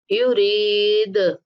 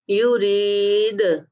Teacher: یعنی کہ دا کو ہلا کے پڑھنا ہے قلقلہ کرتے ہوئے